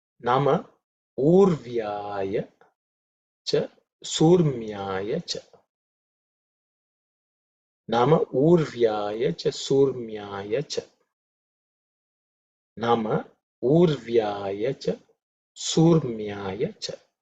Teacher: the Visarga is actually dropped because of Sandhi, because it follows by U